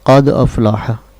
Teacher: اس میں جو قد کی دال ہے اس پر قلقلہ ضروری تھا